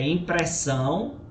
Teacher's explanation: impressão a última sílaba é forte que é o são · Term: oxítonas